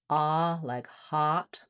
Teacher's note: the A vowel, which is an open back vowel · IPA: /ɑ/